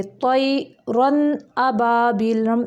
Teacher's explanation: بلا غنّہ، یعنی غنّے کے بغیر بلا غنّہ کے جلد پڑھیں گے، اس کو اظہار حقیقی کہتے ہیں۔ اظہار کہتے ہیں، اصل میں اس کو اظہار حقیقی کہتے ہیں، یعنی حلق سے نکلنے والے حروف ہیں نا، اس لیے۔